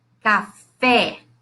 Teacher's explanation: Esse é um E aberto, tá?